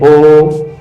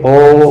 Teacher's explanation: जैसे ओ, बोलिए ओ, तो इसमें हवा कंठ से और ओष्ठ दोनों से टकरा रही है। ओष्ठ को हम थोड़ा संकुचित करते हैं, फिर इसका ओ का उच्चारण होता है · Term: कंठोष्ठ